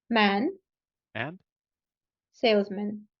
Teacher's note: whatever the sound was it's turned into AWA when it's not the stressed syllable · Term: reduced syllable